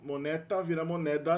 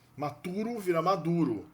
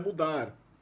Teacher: O T entre duas vogais vira D nas línguas ibéricas. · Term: sonorização das medianas